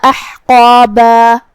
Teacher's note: پھر جو کہ حرف الحا ہے، لہذا ہم حا کو حلق کے درمیان والے حصے سے ادا کریں گے اور اس پہ جزم ہے، لہذا ہمیں حرف الحا کو ظاہر کرنا ہے.